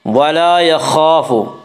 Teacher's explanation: خا کو پر پڑھیں گے، خا حروف مستعلیہ میں سے ہے۔